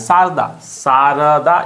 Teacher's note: शारदा में र को हल्के से निकल जा रहे हैं।